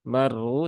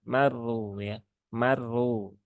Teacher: rnya ya ke huruf ro rnya berbaris domah dan ada tasdidnya rnya dibaca dengan tebal R R R ya dengan menaikkan pangkal lidah